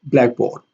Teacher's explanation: In blackboard, the primary stress is on black, and board here has a secondary stress.